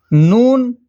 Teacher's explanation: نون سرا زبان تالو سے مل کر نون ادا ہوتا ہے